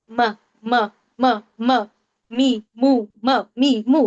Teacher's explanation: کے اوپر سکون لگا لیجیے، اس سے پہلے حمزہ لگا لیجیے، رکے کہاں پہ ہم، ہونٹوں پہ، یعنی کہ میم کہاں سے ادا ہو رہا ہے، ہونٹوں سے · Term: میم کا مخرج